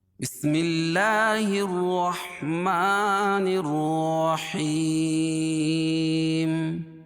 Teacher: حیم، یا ساکن سے پہلے زیر ہو تو یا مدہ، اس کو ایک الف کے برابر کھینچ کے پڑھیں گے، اور جب یہاں میم پر وقف کریں گے تو یہ مد عارض وقفی ہوگا